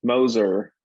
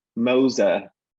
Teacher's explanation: a lot of London speakers are non-rhotic, and so they don't have post-vocalic R.